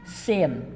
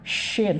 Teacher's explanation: Kalau ini giginya ketemu, sin. Kalau ini giginya renggang, shin. Tapi udara keluar, shin.